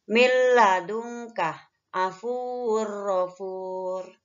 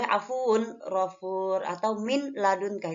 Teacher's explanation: Milladungkah, afun rofur, asalnya kan afun rofur. Nah, jadi bunyi tanwin atau nun matinya dimasukkan kepada huruf lam dan ro tersebut. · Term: idgham bila gunnah